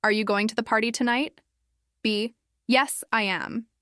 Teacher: First, I'll read the lines in a flat monotone way without any real rhythm or intonation